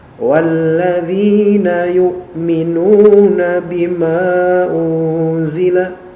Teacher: Ma di sini dipanjangkan hanya 2 harokat saja, maka tidak masalah sebenarnya. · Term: mad jaiz